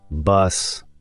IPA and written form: bʌs (bus)